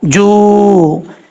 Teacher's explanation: اس کے بعد ہے جیم، جیم پیش واو، جو. یہ یہاں پر واو مدہ ہے، ایک الف کی مقدار اس کو لمبا کر کے پڑھیں گے.